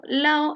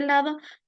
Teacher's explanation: la eliminación frecuente de la d intervocálica